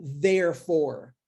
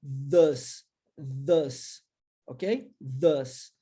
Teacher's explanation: o TH no início das palavras, com a pronúncia do TH vozeada